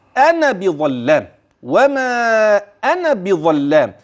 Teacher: اذا عند النطق لا وجود للالف الثانيه في كلمه انا بظلام · وما أنا بظلام للعبيد، لاحظ كلمة أنا بظلام، وما أنا بظلام. إذن عند النطق لا وجود للألف الثانية في كلمة أنا بظلام